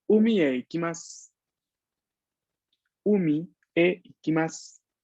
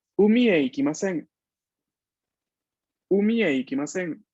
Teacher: es un tono descendiente y es un tono que me va a indicar justamente una negación, y en este caso significa no voy al mar.